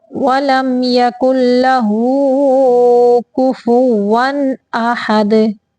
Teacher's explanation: تنوین کے بعد حمزہ آ گیا، یہاں پہ اظہار کا قاعدہ ہے، اظہار حقیقی